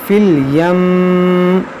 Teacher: میم مشدد ہے, تشدید کو باقی رکھیں گے, زیر کو ساکن کریں گے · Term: وقف